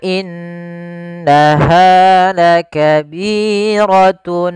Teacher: ditahan dulu suara gunahnya sepanjang dua harakat